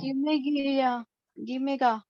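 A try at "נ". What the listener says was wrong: Not this is not Gimel, this is Nun.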